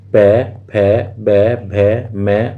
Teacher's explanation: पै वर्ग में क्या होता है? आपस में होठ आपस में मिलते हैं। तो इनको हम ओष्ठ बोलते हैं। होठ आपस में मिलते हैं। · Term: ओष्ठ्य